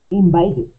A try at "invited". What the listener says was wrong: Good, one more time, invited.